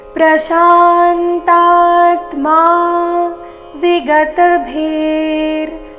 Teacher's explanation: ವಿಗತ ಮೂರುನು ಹ್ರಸ್ವ, ಭೀ ಮುಂದೆ ಮಹಾಪ್ರಾಣ ದೀರ್ಘ ಇದೆ. ವಿಗತ ಭೀರ್ ವಿಸರ್ಗದ ಉಚ್ಚಾರಣೆ ಅರ್ಧ ರ ರೀತಿ.